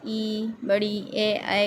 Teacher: अग्र स्वर जो जीभ के अगले हिस्से से उच्चारित किए जाते हैं।